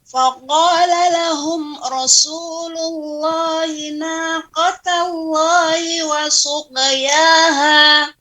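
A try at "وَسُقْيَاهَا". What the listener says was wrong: Kemudian qaf ya, wasuq, qafnya juga lebih ditebalkan. Wasuqiyaha, kemudian lahum ra, seperti itu.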